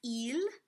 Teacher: to be eel like we would do we swallow the l it's going to be a really pure thin beautiful l